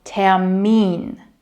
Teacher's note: And in German, the stress is on the second part.